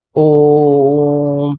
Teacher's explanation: दीर्घ से भी समय ज्यादा लग रहा, तो इसे प्लुत स्वर कहते हैं